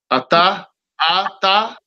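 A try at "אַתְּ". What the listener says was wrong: Nuh-uh, the Shiva is silent. So you would say at, at. Or without vowels, you would say off, off.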